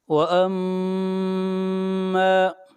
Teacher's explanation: میم کو پر شد ہے، غنہ ہوگا، اور میم کو کھینچ کر پڑھیں گے 1 الف کے برابر. یہاں پر الف مدہ ہے.